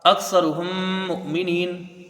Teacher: حمزہ کو کاف سے ملا کے جلدی پڑھا جائے گا، سا کو جلدی پڑھیں گے، را کو بھی جلدی پڑھیں گے، را کو پر پڑھا جائے گا، پیش ہے۔